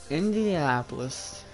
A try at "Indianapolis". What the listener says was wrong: You said Indianapolis without pronouncing the D.